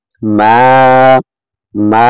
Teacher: এক আলিফ মাদের বামে লম্বা হামজা আছে, 3 আলিফ টেনে পড়তে হবে। চিকন চিহ্ন দেখছেন তো, তারপরে 3 আলিফ টান হবে।